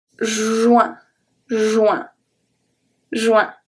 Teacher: And then the U-I-N here is going to be pronounced W-I-N, W-I-N for me.